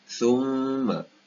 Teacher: Ini bukan sa, tapi tha. Kita punya hujung lidah di bawah gigi atas. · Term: huruf tha